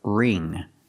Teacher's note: the ing makes the long e sound like green beans